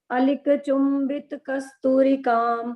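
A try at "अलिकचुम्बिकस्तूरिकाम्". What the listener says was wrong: चुंबी कस्तूरिकाम. चुंबिता नहीं है, चुंबी कस्तूरिकाम. अलिका चुंबी कस्तूरिकाम.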